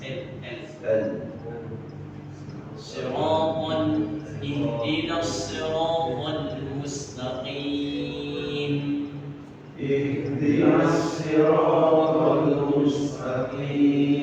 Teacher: Huruf lam ini ada di gigi seri atas, di belakang gigi seri atas.